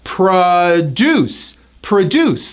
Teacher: This is a two-syllable word and it's a verb. Notice the stress is on the second syllable.